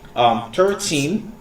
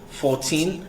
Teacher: you need to stress out on the last syllable, on the teen